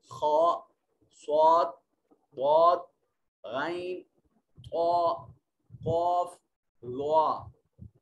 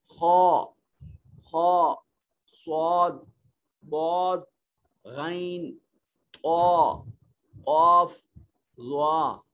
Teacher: آپ ان کو علیحدہ علیحدہ کر کے پڑھیں تو ہمیں منہ کو گول کرنا پڑتا ہے اور آواز ان کی بھاری نکلتی ہے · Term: حروف تفخیم